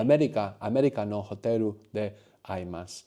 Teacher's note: the R on American and the L on hotel are going to sound the same, sure. Somewhere between the R and the L.